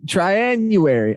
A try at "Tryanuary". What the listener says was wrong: Maybe you're thinking like January, like you're putting the emphasis on the U, like Tryanuary.